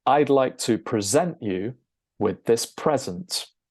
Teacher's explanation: the first 'e' is pronounced with an ə, a schwa sound and the stressed side makes an 'e' sound like in the word 'met'